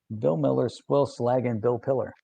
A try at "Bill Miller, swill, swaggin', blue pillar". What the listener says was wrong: See, you said Bill like I did. Bill. It's blue. It's hard to say because you're in that. It's like a tongue twister. Bill Miller, swill, swaggin', blue pillar.